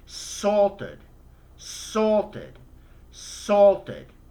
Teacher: because it already ends in a t sound you add the uh sound to make it past tense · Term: ud sound